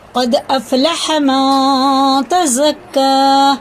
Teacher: دال میں کیا ہے؟ قلقلہ ہے، سخت پڑا جائے گا